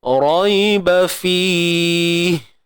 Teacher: Baik, huruf ra baris atas ni tuan-puan, kita tebalkan dia.